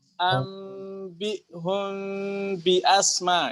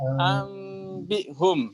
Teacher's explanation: Jadi dia bukan mim asli, bukan ba asli, tetapi kolaborasi ya antara mim dan ba tengah-tengah ya. Jadinya ringan.